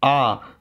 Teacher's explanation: आ जब पढ़ेंगे आ तो हम हमारा मुख सबसे ज्यादा खुलता है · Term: विवृत